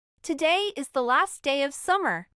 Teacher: principalmente la elisión se dará en dos casos el primero será cuando una palabra finalice con la consonante t o la consonante d y la siguiente palabra inicie con una consonante en este caso el sonido de estas consonantes sería anulado y por lo regular esto se hace para brindar mayor facilidad